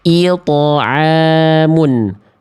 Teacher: Maka pastikan tebalkan pantulannya. Ilto'amun, jangan it'amun. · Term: qalqalah